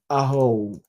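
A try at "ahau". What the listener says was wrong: Ahao. Ahao. It's like in español. Tienes que, you need to pronounce every vocal. Ahao.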